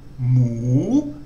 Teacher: it starts off normally then goes up